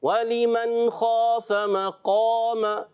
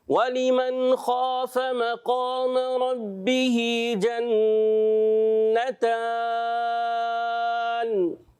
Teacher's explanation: یہاں قاف اور الف کو بھی آپ نے موٹا رکھنا ہے